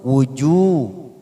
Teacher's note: dhamma bertemu waw sukun, wujuh, 2 harokat